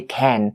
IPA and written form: kæn (can)